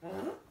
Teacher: le R, on le sent bien dans la gorge